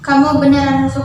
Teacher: infleksi ke atas nada naik di akhir kalimat menyerupai pola bahasa Inggris